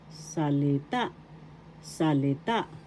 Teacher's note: First syllable sa, second syllable li, third syllable ta. The accent is in the third syllable, salita.